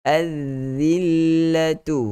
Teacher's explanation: huruf zal macam biasa. Kita kena keluarkan lidah kita, jangan segan silu